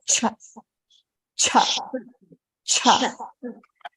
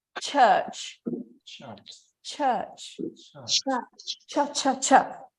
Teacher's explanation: you can imagine there is a T in front of the SH